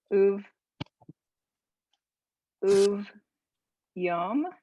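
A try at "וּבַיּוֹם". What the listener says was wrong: I think that's an A vowel underneath, so it's uva. Uvayom hashvi'i shavat.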